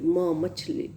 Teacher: when two lips are coming in contact with each other, then air is escaping through the nose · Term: bilabial sounds